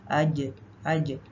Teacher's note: आप आगे लगाएंगे तो फिर इसमें झ की आवाज आ जाएगी तो जीम के लिए जबान का जो दरमियानी हिस्सा है वो तालू से बिल्कुल चिपक जाता है उसमें गैप नहीं रहता